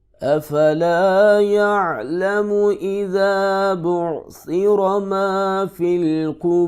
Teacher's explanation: را کو ساکن کر دیں گے وقف کی صورت میں